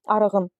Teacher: Necə ki, məsələn arıq sözündən fikrən saitlə başlanan şəkilçi artıran arığın. Görürsüz saitlə başlanan şəkilçi artıranda qğ-ya keçib.